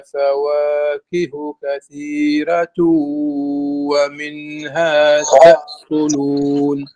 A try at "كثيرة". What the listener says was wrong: لا كثيرة هذه ترقيق الراء لورش فقط كل القراء بالتفخيم إلا ورش رحمه الله